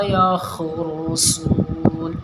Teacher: خا جہاں بھی آتا ہے ہمیشہ موٹا پڑھا جاتا ہے، اور صاد بھی